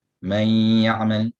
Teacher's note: You read out the nun. You go straight into the ya, but with ghunna. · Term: idgham bi ghunna